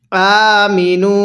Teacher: হামজা এর মধ্যে টান দিব মিমের মধ্যে টান দিব না